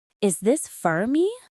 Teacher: Don't stress the word for. Stress the word me.